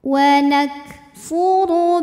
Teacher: huruf ro dibunyikan secara tafkhim karena berbaris damah maka dibacanya ditebalkan pangkal lidah dinaikkan